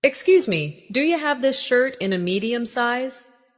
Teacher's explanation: Listen to how do you becomes do ya in natural speech. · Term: connected sound